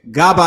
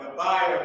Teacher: a breath at the end to pronounce the ha that's at the end of this word